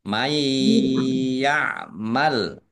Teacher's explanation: nun sukun bertemu dengan huruf ya bacaan idgham bi gunnah masuk dengan mendengung, yaitu mendengung ya, ditandai yaknya ada tasdidnya.